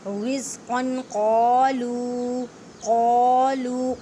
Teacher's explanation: رزقا قالوا، قاف کو ادا کرتے ہوئے خیال رکھیں کہ کاف کی آواز نہ آئے کیونکہ یہ حروف مستعلیہ یعنی موٹے حروف میں سے ہے۔ لو کو ایک الف کی مقدار میں کھینچ کر پڑھیں